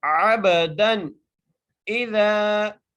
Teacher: یہاں پر ہم غنہ نہیں کریں گے کیونکہ حرف حلقے میں سے آگے حمزہ آ گیا، اس لیے بغیر غنہ کیے پڑھیں گے۔